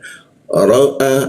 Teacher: alif atau hamzah posisinya ditenggorokan bagian bawah